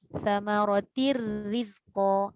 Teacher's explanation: Ra kan tak dengung. Jadi terus masuk ra. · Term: idgham tanpa dengung